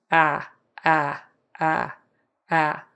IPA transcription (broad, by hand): æ